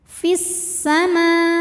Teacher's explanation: secara bunyi pendek Fis Alif lamnya dinamakan dengan alif lam syamsiyah karena alif lam menghadapi huruf Syamsiyah yaitu Sin maka alif lam tidak kita baca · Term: Idgham Syamsi